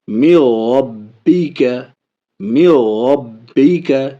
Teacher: آگے دیکھیے، من ربک، من ربک، نون ساکن کے بعد را ہے تو نون کو ادغام کر رہے ہیں، یعنی را سے ملا کے پڑھ رہے ہیں، نون نہیں پڑھا جا رہا ہے، لیکن ناک میں آواز نہیں جا رہی ہے، غنہ نہیں ہو رہا ہے